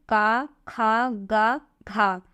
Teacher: इनका उच्चारण स्थान कंठ होता है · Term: का वर्ग